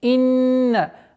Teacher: Удержание назализации в размере двух огласовок буквы нун